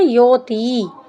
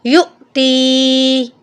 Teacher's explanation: یوتی، یعنی یا کو حمزہ کے ساتھ نہیں ملاتے. یہاں پر حمزہ کے اوپر جزم ہے، یہاں پر ہم نے ہلکا سا جھٹکا دے کے پڑھنا ہے